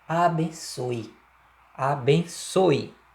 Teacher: quando eu digo abençoe, existe um i aí, né, nessa pronúncia. Concorda que esse é da última sílaba aí, do soe, ele tem som de i, ó, abençoe, abençoe, né?